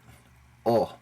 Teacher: It's more like the letter O in Spanish, just O, cut short. O, without that extra breath of air, O, on it.